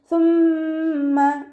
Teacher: കുറച്ച് എയർ നമ്മുടെ പല്ലിൻ്റെ ഇടയിലൂടെ പുറത്തോട്ട് പോണ രീതിയിൽ വേണം ഉച്ചരിക്കാൻ. സീനായി പോവാതെ ശ്രദ്ധിക്കുക കേട്ടോ.